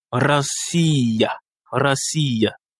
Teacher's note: Ici, l'accent tonique est sur le I. Et il y a trois voyelles, donc trois syllabes.